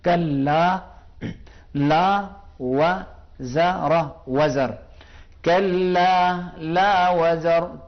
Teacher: کلا تھوڑا سا کھینچیں گے، یعنی 2 حرکت کے برابر ایک الف کو کھینچیں گے